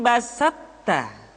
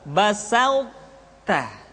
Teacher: Sifat itbaq yang dimiliki oleh huruf to masih tetap ada, sehingga ketika mengucapkan to bertemu dengan ta, terdengar suara yang menebal